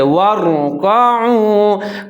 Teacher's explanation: وَارْكَعُوا، واو کے اوپر زبر ہے، را کے اوپر ساکن ہے، را کو موٹا کر کے پڑھیں گے، پر کر کے پڑھیں گے کیونکہ اس سے پہلے جو واو ہے اس کے اوپر زبر ہے